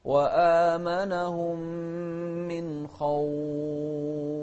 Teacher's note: ننتبه للفاء أيضا في الهمس فيها، خاصة إذا كانت متطرفة عشان تتضح